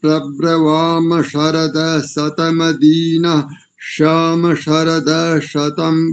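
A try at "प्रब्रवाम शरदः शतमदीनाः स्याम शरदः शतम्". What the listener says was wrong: बहुत बढ़िया उच्चारण, एक स्थान पर चूक गए, बस एक स्थान पर भी चूक गए, प्रयास अच्छा किया था लेकिन चूक हो गए वहां। शतमदीनः श्याम नहीं करेंगे, श्यामा, शतमदीना श्यामा, श्यामा, ठीक है जी?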